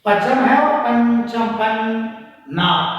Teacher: हमारे दोनों नॉस्ट्रिल में, नथुनों में कंपन होगा